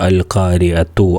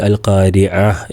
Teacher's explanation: ചേർത്തി ഓതുമ്പോൾ താ ആയിട്ട് പറയണം. വഖഫ് ചെയ്യുമ്പോൾ ഹാ ആയിട്ട് ഉച്ചരിക്കണം. ചേർത്തി ഓതുമ്പോൾ താ, വഖഫ് ചെയ്യുമ്പോൾ ഹാ. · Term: ഹാ ഉ തഅനീസ്